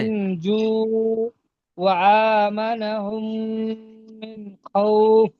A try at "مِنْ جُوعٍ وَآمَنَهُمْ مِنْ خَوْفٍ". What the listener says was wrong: মাশাআল্লাহ, খুব সুন্দর হয়েছে। এখানে একটা আপনার একটু ভুল হয়ে যাচ্ছিল, এই তটা, তটা কলকলাটা হচ্ছিল না।